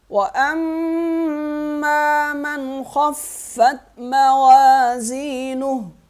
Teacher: وَأَمَّا میم پہ غنہ کریں گے، وَأَمَّا مَنْ خَفَّتْ من پہ غنہ نہیں کریں گے